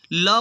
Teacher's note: ल वर्ण जो है पार्श्विक है